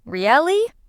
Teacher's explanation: Now say it with a rising tone.